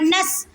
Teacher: نون سین زبر نس، نون کو سین ساکن کے ساتھ ملائیں اور سین کو سختی سے ادا کریں کیونکہ سین سیٹی والے حروف میں سے ہے